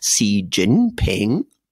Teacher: so it goes up down up